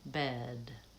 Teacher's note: as I'm saying those words, I tend to lengthen on the second vowel for bed.